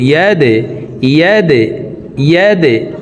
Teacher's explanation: ইয়া দাল জবর ইয়াদে, দাল কলকলার হরফ, তো নিচের দিকে ধাবিত করে ধাক্কা দিয়ে উচ্চারণ করব।